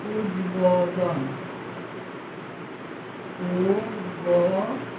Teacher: উদ, তারপরে হলো ব, তারপরে ব এসেছে, ব, যদিও বয় অকার কিন্তু এখানে সরাসরি ব এসেছে, ও আসে। ইংলিশ ওয়ার মতো আসে না, বি এর মতো আসছে। এখানে বানানে ওকার আছে বলে ওকার আসছে, কিন্তু সরাসরি বটি আমরা এখানে পেয়েছি, এখানে ওয়া আসে না। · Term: বর্গীয় ব